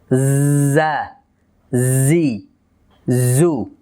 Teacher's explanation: আওয়াজটি জারি করব আরেকটি সিফাত সাথে খেয়াল রাখবো, সেটি হচ্ছে সফির, অর্থাৎ তেজ আওয়াজ, জা, জি, জু, এভাবে।